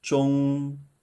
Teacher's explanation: marked with the first tone, which is the high and flat tone